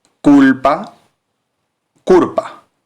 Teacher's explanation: el intercambio de la l y la r en el final de sílabas